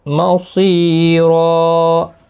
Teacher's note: یہاں پر ساءت یہاں پر بھی مد متصل ہے، 4 الف کی مقدار کے برابر کھینچ کر پڑھیں گے، صاد حروف مستعلیہ میں سے ہے، پر پڑھا جائے گا، سی یا مدہ بھی ہے، 1 الف کی مقدار کے برابر کھینچ کر بھی پڑھیں گے، اور یہاں پر وقف کی صورت میں 2 زبر کو بدل کر 1 زبر کے ساتھ وقف کریں گے، وقف بالابدال ہوگا، الف مدہ بنے گا، 1 الف کی مقدار کے برابر کھینچ کر وقف کریں گے، را پر بھی پڑھا جائے گا زبر 2 زبر کی وجہ سے۔